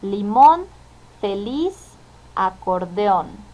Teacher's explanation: sílaba tónica oa su acentuación estas son primero las palabras agudas éstas se caracterizan porque tienen acentuación en la última sílaba